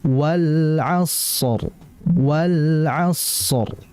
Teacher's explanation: Maka dijelaskan alnya, dan al-lam di situ memiliki sifat tawasud. Dan tawasud ini bermakna mengalir tapi tidak terlalu lama.